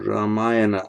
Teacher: Ramayana, there's a retroflex n, even though you've got the Amaya in between.